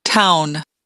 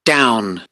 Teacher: we can hear that the first one is more front. It begins as a front vowel.